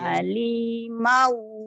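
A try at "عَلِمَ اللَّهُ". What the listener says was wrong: Salah. Panjang pendeknya salah. Nggak ada yang panjang di situ.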